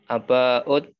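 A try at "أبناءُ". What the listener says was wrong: A-nya panjang. Aba'u.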